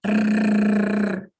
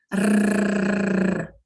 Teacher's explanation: Este som, eu vibro a língua no céu da boca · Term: R bem vibrante